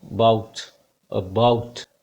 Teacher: Then again प sound, ये जो आप उल्टा ई देख रहे हैं, this is अ sound, वीक sound of आ की बहुत ही कमज़ोर सी साउंड है, जैसे अबाउट में होती है।